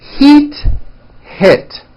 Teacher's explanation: Think of the sound E as in heat as being high up, and I as in hit as being a little bit lower. One hint I could give you is when you're practicing, raise your eyebrows with E words like this, heat, and then lower your eyebrows and don't smile so much with I words like hit.